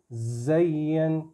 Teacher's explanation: زا buzzing sound نکلے گی، زین، یہ زین نہیں ہے، یہ زین ہے۔